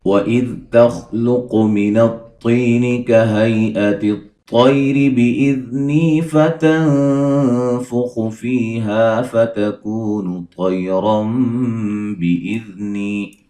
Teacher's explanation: خا کو موٹا ادا کریں گے، قاف کو موٹا ادا کریں گے، طا کو موٹا ادا کریں گے